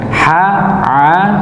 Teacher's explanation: Ha, a ini sama tempatnya di tengah lidah. Nggih, di tengah lidah. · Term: huruf ha dan ain